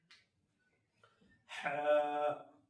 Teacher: ح حلق کے درمیانی حصے سے نکلے گا